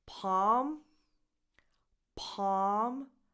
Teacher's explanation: The L is silent